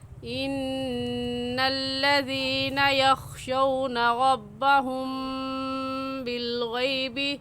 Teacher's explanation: ایسے پڑھیں گے ان الذین، زینہ کو کھینچیں گے کیونکہ یا ساکن سے پہلے زیر آ گئی ہے، تو یا ساکن سے پہلے زیر آ جائے تو وہ یا مدہ کہلاتا ہے، اور یا مدہ کو ایک الف کے برابر کھینچ کر پڑھتے ہیں، نہ اس سے کم اور نہ ہی اس سے زیادہ۔